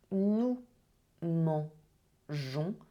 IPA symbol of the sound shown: ʒ